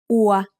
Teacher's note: They make the vowel sound อัว, which is like a combination of u and a. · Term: สระอัว